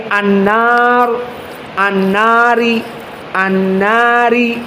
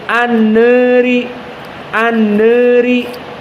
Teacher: dia condong dari fathah kepada kasrah namun tidak begitu condong seperti alqisai yang alimalah alkubro maka dinamakan alimalah assugra atau ataqlil lalu apa makna atqlil maknanya